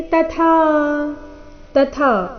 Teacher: ಮೊದಲು ತ ಅಲ್ಪ ಪ್ರಾಣ, ನಂತರ ಥಾ ಮಹಾಪ್ರಾಣ ದೀರ್ಘ